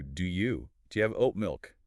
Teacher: The D and the Y blur into one sound. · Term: assimilation and elision